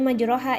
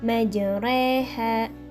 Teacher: memeringkan bunyi harokat fathah ke bunyi harokat kasroh atau membengkokkan alif ke arah huruf ya. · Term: imalah